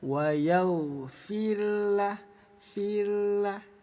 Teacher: Sukun itu artinya mati. Ketika ada ro sukun didahului harokat sebelumnya kasroh, maka ro-nya dipastikan dibaca tarkik ya. · Jadi bunyi ro kita tipiskan. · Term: ro tarkik